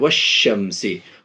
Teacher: number 2, अलिफ लाम اگر حروف شمسی کے شروع میں ہوں تو الف اور لام کو نہ پڑھیں گے، یعنی یوں کہیے الف لام دونوں کو نہیں پڑھیں گے بلکہ بعد والے حروف سے ملا کر پڑھیں گے، جیسے والشمسی، الف اور لام دونوں سائلنٹ ہو رہا ہے، نہیں پڑھ رہے، صرف شینے ملا رہے ہیں